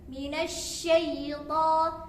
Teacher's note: Nah, di situ ada huruf shin. Shin itu memiliki sifat tafasyi, yaitu menyebarnya udara ke dalam mulut.